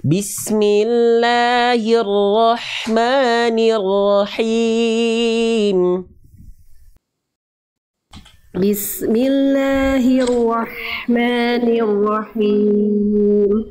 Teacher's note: H kecil dilafalkan dari tengahtenggorokan berbisik karakternya